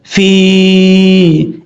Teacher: آسان لفظوں میں یا کے اوپر جزم ہو اور یا سے جو پہلا حرف ہوگا اس کے نیچے زیر ہوگی تو یا مدہ ہوگا، یعنی ایک الف کی مقدار اس کو لمبا کر کے پڑھا جائے گا